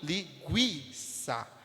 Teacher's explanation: A força vai estar no I. Linguiça. E não no U. O U vai sair um pouco mais fraco. Vai ser a semivogal, enquanto que o I vai ser a vogal.